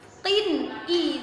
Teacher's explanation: i itu dibacanya jelas, disebut izhar atau izhar halqi